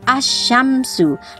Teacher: langsung masuk idgham ke shinnya ya. Alnya tidak terbaca, itu idgham samsiyah.